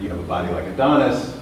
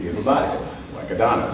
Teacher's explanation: where you pause can be the difference between a lie, like you have a body like Adonis, and the truth